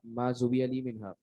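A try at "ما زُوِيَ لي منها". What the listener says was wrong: زویہ مجھول کا سیکھا ہے. زہا پر آپ کے پاس جو ہے وہ ضمہ نہیں ہوگا.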